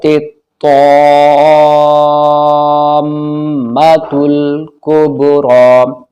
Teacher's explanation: مد لازم، کیونکہ حرف مد کے بعد تشدید اسی لفظ میں ہے، اسی کلمے میں ہے، تو مد لازم ہوگا، 4 الف 5 الف تک کھینچنا ہے